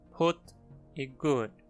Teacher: A única comum é a vogal quase posterior quase fechada arredondada. Como o nosso "u" átono ou como o "u" curto do inglês em palavras como "put" e "good".